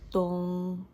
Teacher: We add a tone mark for this one. The pitch is kept level, starting from the middle level. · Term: seventh tone